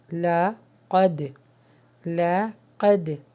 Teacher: یہاں پر قلقلہ ہوگا، دال کے اوپر جزم ہے